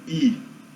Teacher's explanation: As vogais dianteiras são, a vogal mais dianteira geralmente tem esse I, é pronunciado bem na frente da boca